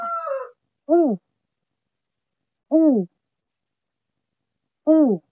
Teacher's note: Ang punto ay palikod at ang antas ng dila ay pataas at ang labi ay pabilog.